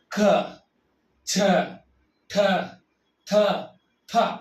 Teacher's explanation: ಹೆಚ್ಚು ಉಸಿರಿಂದ ಉಚ್ಚರಣೆ ಮಾಡತಕ್ಕಂತ ಅಕ್ಷರಗಳು ಅಂದ್ರೆ ಹೆಚ್ಚು ನಾವು ಉಚ್ಚಾರಣೆ ಮಾಡೋಕ್ಕೆ ಸಮಯ ಜಾಸ್ತಿ ತಗೊಳ್ತೀವಿ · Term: ಮಹಾಪ್ರಾಣ